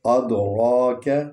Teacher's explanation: را کو پر پڑھنا ہے اور لمبا پڑھنا ہے کیونکہ اس پر کھڑا الف ہے